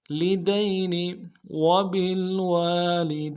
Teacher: دال کو یا کے ساتھ ملانا ہے، یا لین ہے بغیر کھینچے پڑیں گے